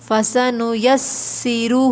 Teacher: بالحسنی فسنیسرہ، دیکھیے یہاں پر 2 دفعہ سین آ رہا ہے تو ہمیں واضح کر کے پڑھنا ہے، اور دوسرے والے سین کے اوپر تشدید ہے تو ہمیں یہاں تھوڑا رکنا ہے